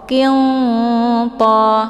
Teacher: Qiyanta dengan cara didengungkan, namun dengungannya sedikit karena antar makharijul huruf nun dengan ta itu saling berdekatan. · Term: ikhfa aqrab